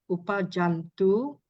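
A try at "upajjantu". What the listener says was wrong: Not upajantu. Upajantu. So there are double consonants. As you can see here, these are double consonants. Not one consonant, two, 1, 2. So you have to reduplicate. Upajantu. Upajantu.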